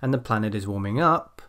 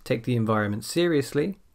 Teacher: when i get to the end of a dependent clause my voice goes up a bit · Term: intonation